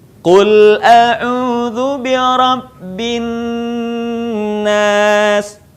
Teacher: bin nas, suaranya ditahan dulu